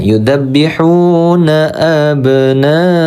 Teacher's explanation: Huruf ba kita sukunkan, cara bacanya adalah qalqalah sugro ya.